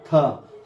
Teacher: थ ध्वनि का उच्चारण स्थान दंत होगा। क्योंकि थ को बोलने में भी आपका जीभ दांत में सटता है। उसे धक्का मारता है।